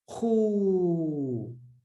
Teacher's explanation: So the waw mad extends the dhamma sound.